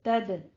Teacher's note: تد اب دال کے اوپر کلکلا کرنا ہے. یہ رکے گی اور تد یہ کلکلا کرنا ہے.